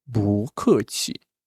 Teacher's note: this 不 changed to the second tone because fourth tone. 不 客 气 and this is zero.